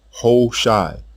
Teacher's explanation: the initial ha in this name was almost silent because of the stress on the long o vowel in the opening syllable · the stress on the long o vowel in the opening syllable a long eye vowel was heard at the end of the name